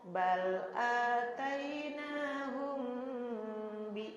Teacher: menghadapi B disebutnya ikhfa syafawi, dengungnya ditahan.